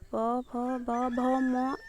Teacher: ଏହା ଓଠକୁ ଓଠ ଯୋଡ଼ିଥାଏ, ତେଣୁ ଏହାକୁ ଓଷ୍ଠ୍ୟ ବର୍ଣ୍ଣ କୁହାଯାଏ